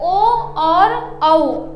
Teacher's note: ओ और औ इन दोनों का उच्चारण स्थान कंठ और ओष्ठ होता है, इसलिए इन्हें कंठोष्ठ वर्ण कहा जाता है।